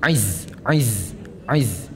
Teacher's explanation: Untuk huruf zai, zai panjang tu. Di mana lidah kita? Di belakang gigi atas.